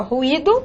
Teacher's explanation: ruído, né, penúltima sílaba tônica, uma paroxítona